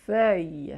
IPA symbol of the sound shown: fɶj